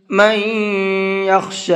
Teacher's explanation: من یخشی، یہاں نون ساکن کے بعد میں یا ہے، نون ساکن کے بعد میں یا آتا ہے تو وہاں پر غنہ کر کے پڑھتے ہیں